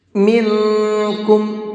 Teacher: نون ساکن کے بعد اخفا کے حرفوں میں سے کوئی بھی حرف آتا ہے تو وہاں نون کی آواز کو ناک میں چھپا کر کے پڑھتے ہیں